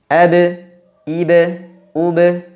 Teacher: Qalqalah yakni suara memantul Kenapa huruf ba disifati dengan Qalqalah karena huruf ba ketika dia dalam kondisi sukun mati dipantulkan